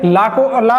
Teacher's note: जीभ जाके आपके मसूड़े के ऊपरी भाग में स्पर्श करेगी